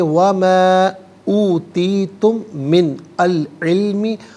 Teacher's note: میم ساکن ہے، اسے من کی میم کے ساتھ ملائیں گے، میم کی آواز کو غننے کے ساتھ ادا کریں گے